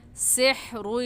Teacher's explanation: हा हलक के दरमियानी हिस्से से निकलता है, तो हा को निकाल कर पढ़ेंगे सिहरुन।